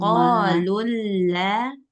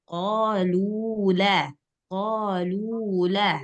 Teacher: nggak boleh tasydid, nggak boleh digabung